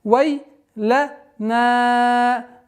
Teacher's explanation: Долгота в размере четырех огласовок фатхи.